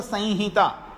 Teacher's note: लेकिन वास्तव में अगर बोले तो संहिता, संहिता यानी जो अनुस्वार है वो नाक में उच्चारण, संहिता ऐसा होगा।